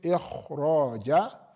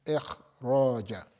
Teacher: you are going to put it at the level of the kasra, which is tafkhimun nisbi, which is relative heaviness. So you don't say ikhraja, that's too much, it's ikhraja, and like that.